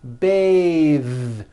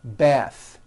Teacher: when you change it into a verb to bathe the vowel changes to an a sound and the th is voiced